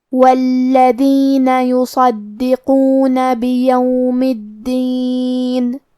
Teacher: صاد حروف التفخیم میں سے ہے لہذا ہمیں یہ حرف کو بھاری آواز میں اور منہ پھلا کے پڑھنا ہے